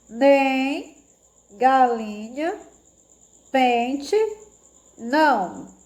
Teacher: A gente sente que sai uma vibraçãozinha maior pelo nariz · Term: sonzinho nasal